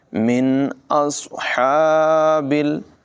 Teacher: सौद की आवाज़ पुर होगी, हा को हलक़ के दरमियान वाले हिस्से से नुमाया अदा करेंगे।